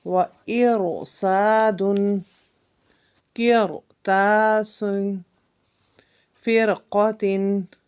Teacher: حرف را کو پر پڑھیں گے، اور اس کو تفخیم کہتے ہیں، اور اس کے پڑھنے کو مفخم، را مفخم جو ہے وہ ہم کہیں گے۔